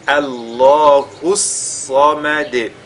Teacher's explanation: il faudra qu'on veille à bien faire la liaison entre le hu et le sad qui suit.